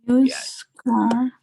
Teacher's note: that used sound is more of a consonant sound, right? Like almost a Y sound.